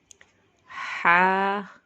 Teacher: ہا کی آواز حلق سے نکلتی ہے